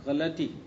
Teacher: غلطی کا لام ساکن بولنا غلط ہے، بلکہ اس کو فتحے کے ساتھ بولیں گے